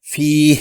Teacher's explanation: یہاں دوسرا حرف یا ساکن ہے اور اس سے پہلے حرف فا زیر والا مکسور ہے، تو یہ یا مدہ ہو گیا۔ اس یا کو 2 حرکات کھینچ کر پڑھیں گے